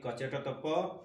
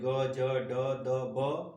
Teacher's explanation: अल्प प्राण में कम श्वास की जरूरत वाले जो वर्ण होते हैं, वह वर्ण जिसमें बोलने में बहुत कम हवा की जरूरत हो, उसमें पहला, तीसरा और पांचवा वर्ण आते हैं।